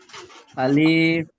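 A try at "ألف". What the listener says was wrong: টান নাই, আলিফ টান দেওয়া যাবে না, আলিফ।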